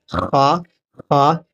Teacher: یہ بھی حرف حلق حلقی ہے، یہ آخری حلق سے ادا ہوتا ہے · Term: حرف حلقی